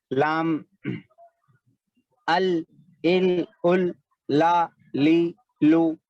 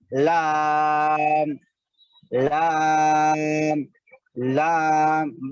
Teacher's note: دانتوں کے کناروں میں نہیں, دانتوں کے پیچھے جو مسوڑا ہوتا ہے اس مسوڑے کے پاس زبان لگانے سے ادا ہوتا ہے